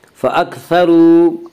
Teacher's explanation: وامدہ کو ایک الف کے برابر کھینچ کر پڑھیں گے